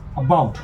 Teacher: So it has two vowel sounds, the schwa vowel at the beginning, the very weak vowel sound, and the ow, the diphthong ow in the middle. So this word about has two syllables.